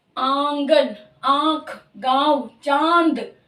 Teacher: इस आवाज के साथ सिर्फ नाक की साउंड टच होरी नाक से आवाज निकल रही है